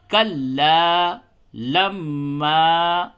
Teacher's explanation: کلا لما غنہ بھی ہوگا اور الف مدہ کو کھینچ کے پڑھتے ہیں